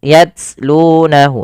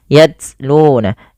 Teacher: Syiddah adalah tertahannya suara, maka nah, langkah pertama dalam membaca ini biasanya kalau tak sukun, pertama baca dengan syiddahnya dulu, baru ambil dengan hamasnya, hamas aliran nafasnya